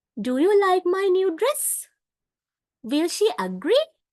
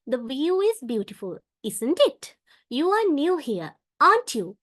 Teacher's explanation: the pitch of the voice Rises at the end of the sentence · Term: Rising intonation